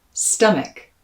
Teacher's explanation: that second syllable even though it's an a spelling is going to be pronounced with an e the same vowel sound that you hear in my pronunciation of words like kit